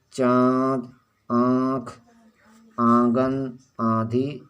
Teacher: इसका उच्चारण नाक और मुख दोनों से होता है, इसे अनुनासिक कहते हैं